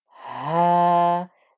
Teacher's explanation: This is a 2-count stretch. The deep ha here has the fatha with the alif, so I get a 2-count stretch